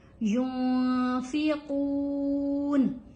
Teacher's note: یہاں نون کے اوپر ہم نے اخفا کیا ہے کیونکہ نون ساکن ہے اور اس کے بعد فا ہے. جب نون ساکن کے بعد کچھ حروف ہیں وہ آ جائیں، ان میں سے ایک فا بھی ہے.